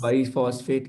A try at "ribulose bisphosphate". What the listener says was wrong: Yeah, it's ribulose bisphosphate, not biphosphate. Yes, there's an S. Don't make a mistake there.